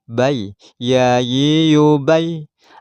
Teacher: tidak ada nafas yang keluar ketika melafadzkan ya, baik ketika ya itu hidup maupun mati. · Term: jahar